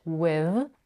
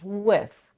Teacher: in general with can be pronounced in two ways with the voice th with or with the voiceless th with · With a voiced th, with, or with a voiceless th, with. But here the next phoneme is the voiceless h in the word him, and maybe that's why she says with the voiceless th.